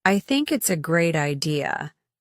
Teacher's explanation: For example, if you shadow someone saying, "I think it's a great idea," you'll focus on pronouncing the th sound in think and mimicking the rising intonation at the end of the sentence